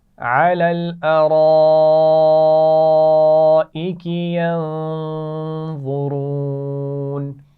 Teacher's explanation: ینظرون نون پر غنہ ہو رہا ہے اور اس کے بعد وا اور را دونوں موٹی پڑھی جائیں گی